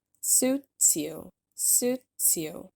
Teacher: then we have a stop t in the word suits and the s is pulled over to the word you to connect these words together